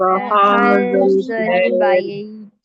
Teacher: ہا کو سینے والے حصے سے نکالیں گے. حلق کے ہا سمپل ہا.